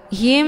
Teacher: Cara bacanya, mim sukunnya dileburkan ataupun dimasukkan ke dalam mim yang berharokah dengan cara ditekan kemudian ditahan lebih kurang 2 kali ketukan. · Himmi, ya, ditahan dulu bacaannya. Hukum bacaan idgham mimi dibacanya sambil didengungkan.